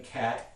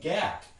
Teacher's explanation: if you change the voicing you can get another kind of contrast between cat and gat